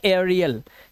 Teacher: एई के बाद अगर आपको आर दिखाई दे जाए तो एई का उच्चारण क्या हो जाएगा ए आ हो जाएगा